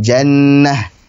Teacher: Jannah menjadi ha dengan sukun.